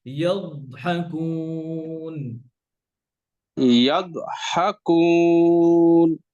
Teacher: ইয়াদ দদ কলকলা হবে না